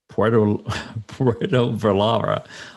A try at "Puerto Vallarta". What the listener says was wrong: So the L's have a Y sound. So pretend it's Vayarta. Yes, don't say Vallarta.